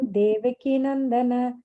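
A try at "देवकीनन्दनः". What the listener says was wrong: Nandanaha. On the previous line, this is a visarga then. Nandanaha.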